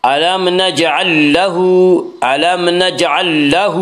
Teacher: الم نجعل لہ، الم نجعل لہ، ہا کے اوپر الٹا پیش ہے، الٹا پیش قائم مقام ہے واو مدہ، اس لیے الٹا پیش کو 1 الف کے برابر کھینچ کر پڑھیں گے